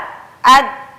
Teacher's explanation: nafas ditahan suara ditahan maka alhasil adalah memantul nya suara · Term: sifat Qalqalah